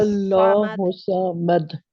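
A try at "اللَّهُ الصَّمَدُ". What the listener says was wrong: नहीं, आपकी शाद बहुत कमजोर है, हुस्सा, हुस्सा।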